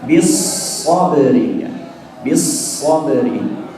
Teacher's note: Kalau huruf yang bertasydid itu biasanya terdiri dari huruf pertama dia sukun dulu, sehingga ketika shad bertasydid nampakkan sifat shafirnya